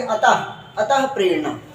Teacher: है जी त के बाद योग वा हमारा लगा हुआ है जिसको हम विसर्ग कहते हैं आधे ह की ध्वनि